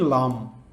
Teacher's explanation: জিহবার অগ্রভাগের পাশ ও সামনের উপরের দাঁতের গোড়ার দিকে তালুর সাথে মিলে উচ্চারিত হয়